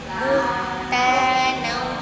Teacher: Pokoknya kalau kita ada nyebutin huruf nun atau mim, pasti ada bunyi gunnah. Pasti ada suara yang mengalir ke rongga hidung atau pangkal hidung.